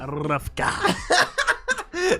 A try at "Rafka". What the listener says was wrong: Tu as fait le R roulé là?